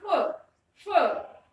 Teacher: जो ये फ जो बोला जाएगा इस प्रकार से बोला जाएगा आपके ऊपर वाले दांत और नीचे वाले होठ से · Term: दंतोष्ठ